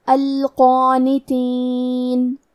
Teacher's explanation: کلمت القانتین میں حرف القاف کو اور اس کے بعد مد الف کو دونوں کو تفخیم سے مطلب بھاری آواز میں ادا کریں گے